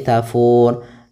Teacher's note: Nah, sedangkan ro di sini ini kita namakan dengan sukun arid, sukun yang muncul disebabkan karena waqaf. Maka kita matikan ro-nya jadi tafur. Nah, untuk panjang fu sendiri karena dia bertemu dengan huruf wat dan huruf yang dimatikan, maka kita boleh baca di sini 2 harokat, boleh pula 4 harokat dan boleh pula 6 harokat.